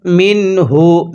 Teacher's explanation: এই যে দেখুন আমরা এই নুন সাকিনটা স্পষ্ট করে পড়ব। নুন সাকিনের পরে ইজহারে হরফ হা থাকলে নুন সাকিনটা স্পষ্ট করে পড়তে হয়।